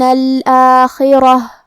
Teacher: کلمت الآخرہ میں یہاں حرف الخا ہے، خا کی ادائیگی حلق کے اوپر والے حصے سے ہے. پھر جو کہ را پہ زبر ہے تو را کا حکم ہے تفخیم، ہم را کو موٹی آواز میں ادا کریں گے